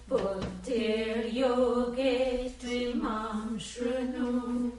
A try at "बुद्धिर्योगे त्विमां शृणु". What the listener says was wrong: It's not shrunu, it's shrinu. Shru, like vrikshaha. Shrinu.